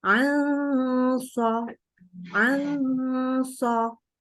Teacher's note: kalau ketika ketemu shad, maka dia ditebalkan atau ditafkhimkan dengungnya, ya, karena dia posisi pangkal lidah naik.